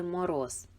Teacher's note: перший звук в слові Мороз звук м - це твердий приголосний звук